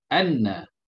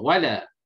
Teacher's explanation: Suara yang macam kita sebut, itulah gun. Suara yang sengau keluar daripada pangkal khayshum kita. Kalau kita tutup hidung kita ini, kita sebut, kita tidak akan boleh sebut. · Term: gunnah